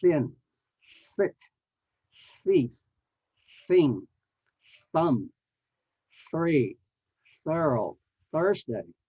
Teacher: the soft th is aspirated so you have to have air blowing out with your tongue still between your teeth